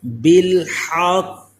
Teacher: بالحق، او جو آواز لوٹ کر آئی تو یہ قلقلہ ہوا، اسی طرح قاف کو پر بھی پڑھیں اور ہا کو حلق کے درمیان والے حصے سے ادا کریں، سانس کی آواز اس میں آئے، یہ ہا کا مخرج حلق کے درمیان والے حصے سے ہے۔